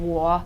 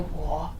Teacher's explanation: I can understand what you mean there, but with the tone, you can keep the same tones and you notice I was saying war, but I can also say war. The tone stays the same. It's the expression in my voice that might change.